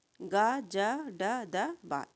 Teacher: अल्प प्राण घोष में गा जा ड द बा